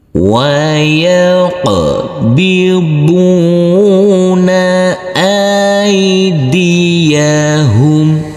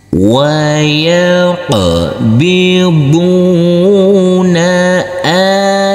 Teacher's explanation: huruf qaf harus kita pantulkan karena ini adalah bacaan qalqalah